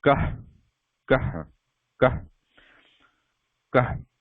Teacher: There is light breath, the breath coming out. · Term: Visarga